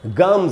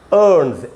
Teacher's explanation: देखिए ये एम से ख़त्म हो रहा है. एम भी एक वॉइस्ड कॉन्सोनेंट है, उसके बाद एस लगा तो उसको ज पढ़ रहे हैं, जेड.